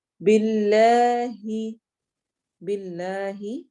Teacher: لام سے پہلے با کے نیچے کسرہ زیر آ رہی ہے اس لیے یہ باریک پڑھا جائے گا